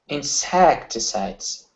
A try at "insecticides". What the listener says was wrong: Okay, less air. You're pushing air out. You're saying insect. Okay, you're breathing at the same time. The requires less air. Okay, you're pushing on that. You're saying insect.